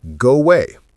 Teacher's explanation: When a word ends in a vowel and the next starts with a vowel, we insert a tiny w or yes sound. Go away becomes go away with a tiny w sound. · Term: Linking vowel to vowel